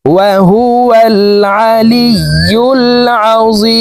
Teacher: এখানে 3 আলিফ টেনে মিমকে সাকিন করতে হবে, কারণ মদের হরফের বামের হরফে ওয়াকফ হইলে মুদ্দা আরজি 3 আলিফ টানিয়া পড়িতে হয়।